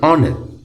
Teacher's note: we say an honor even though this starts with an edge the h here is silent and it sounds like honor